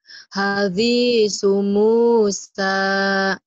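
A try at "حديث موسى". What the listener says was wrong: Hadithu sa ujung lidah ya. Hadithu Musa sa diulang. Hadithu Musa.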